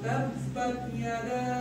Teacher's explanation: مد منفصل کے لیے کہا جاتا ہے کہ مد منفصل کا کھینچنا بھی جائز ہے اور نہ کھینچنا بھی جائز ہے۔ اگر ہم قرآن سیکھ رہے ہیں اس لیے ہم اس کو کھینچیں گے۔